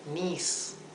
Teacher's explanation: voy a colocar una i más porque la i debería ser una i larga